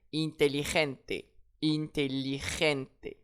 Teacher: Et j'accentue sur l'avant-dernier e.